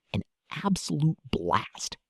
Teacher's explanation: Notice the wide A sound in absolute and blast. Drop your jaw.